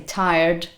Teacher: whereas if you're using an american accent or maybe some other rhotic accents that tend to pronounce the r and tend to use it then you can hear so for